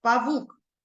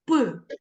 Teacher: звук п він у нас глухий так твердий приголосний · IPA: [п]